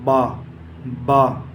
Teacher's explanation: बा का मखरज है दोनों होठों की तरी का हिस्सा यानी दोनों होठ बंद करने से जो निकलता है